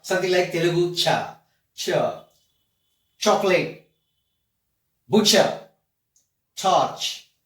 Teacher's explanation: it's a mix of two consonant sounds. So one is T, another one is Sha. Both are clubbed together, forms a new sound. It has to be articulated as cha.